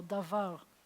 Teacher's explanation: we're going to have the accent on last syllable